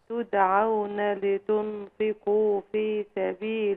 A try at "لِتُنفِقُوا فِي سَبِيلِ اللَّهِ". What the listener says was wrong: في سبيل الله. قفي هنا، وانت عايزه تقفي قفي هنا. لتنفقوا، ما تسيبيش الغنة.